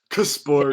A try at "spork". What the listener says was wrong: Spork. Spork. No, just spork because the K is silent.